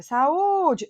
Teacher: o u é tônico é hiato e está sozinho